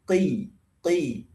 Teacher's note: dari awalnya di pangkal pangkal lidah belakang sini bertemu dengan pangkal langit-langit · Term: huruf qof